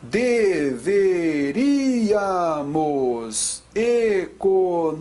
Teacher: Antepenúltima é a sílaba tônica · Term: proparoxítona